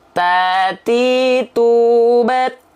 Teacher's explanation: Ujung lidah disentuhkan dengan pangkal gigi seri atas kita, ya. Jadi bukan keluar mulut, teman-teman, bukan ke sini. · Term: huruf ta